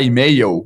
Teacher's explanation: ao invés de e-mail, a gente fala e-mail com som de OU